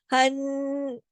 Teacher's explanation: نون کی آواز ناک میں دیر تک چھپے گی، اکمل غنہ ہوگا